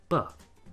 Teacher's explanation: You put your lips together, let the pressure build up behind them, and then release with some voicing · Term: b sound